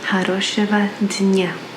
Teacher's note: you'll see that there is a G, but we pronounce it like a V